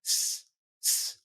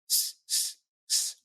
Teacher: So I go, now the S sound sounds like s, s. My tongue is not sticking out. It's retracted. It's inside my mouth, behind my teeth.